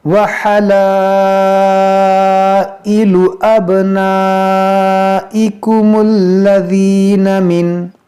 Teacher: ये मद्दे मुत्तसिल है, अलिफ मद्दा के बाद हमज़ा उसी कलमे में है। यहाँ बा में कलकला करेंगे।